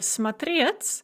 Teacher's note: смотреть with the stress on the second syllable in the infinitive.